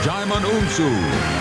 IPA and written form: ˈdʒaɪmən ˈuːnsuː (Djimon Hounsou)